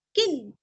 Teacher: अनुस्वार का उच्चारण आधा न, किन, क्योंकि आगे ज आया हुआ है।